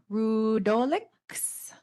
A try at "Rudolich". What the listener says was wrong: You had that almost right. It's Rudolich, pronounced like it had a CH on the end of it.